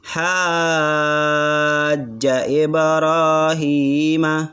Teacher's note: Dan ha itu panjang 6 karena ada mat lazim kalimil musaqqal, maka dibaca panjang 6 harokat.